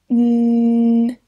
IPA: n